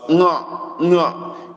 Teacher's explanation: It's pronounced with the tongue, the tip of the tongue, folded a little bit backward, not letting the sound come out clearly. Just like a blurred sound. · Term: N with dot on top